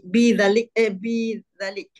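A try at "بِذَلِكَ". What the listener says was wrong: Za panjang. Kalau pendek tu dia jadi macam tersangkut je. Bizalik yang panjang.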